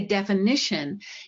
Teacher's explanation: if you say definition, you've said a schwa in that second syllable